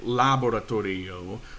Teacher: every vowel gets its own syllable no exceptions so you know even though we have this eo here those are two separate syllables and therefore e gets the emphasis there now guys it's not